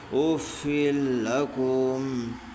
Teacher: 2 زیر کی تنوین کے بعد حروف یرملون کے 6 حرفوں میں سے لام ہے، اس لیے 2 زیر کی تنوین کو بلا گنہ ملا کر پڑھیں گے. اس کو ادغام تام بلا گنہ کہتے ہیں.